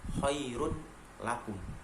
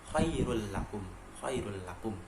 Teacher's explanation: Tapi karena di situ terdapat hukum bacaan idgham bila gunnah, yaitu dhammaten bertemu dengan huruf salah satu idgham bila gunnah yaitu lam, maka harus dibaca khairul lakum, khairul lakum, memasukkan tapi tanpa mendengung